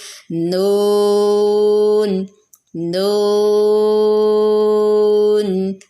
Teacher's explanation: نون کا مخرج بھی زبان کا کنارہ اوپر کے سامنے کے 6 دانتوں کے مسوڑوں سے لگتا ہے، تو پھر نون ادا ہوتا ہے، لیکن ہونٹ بالکل گول نہیں